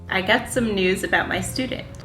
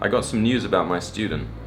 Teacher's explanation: The Americans just say ooh, but the English people add a y sound in there, and they say you.